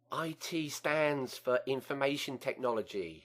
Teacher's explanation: there's a nasal quality uh to your voice in other words some of your voice is actually in your nose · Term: nasal twang